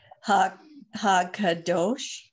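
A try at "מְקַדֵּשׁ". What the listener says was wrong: Look at the beginning letter. You're right, but you just have to change the beginning letter. Ma-kadosh. Look at what's under the Me-kadesh. Same letters.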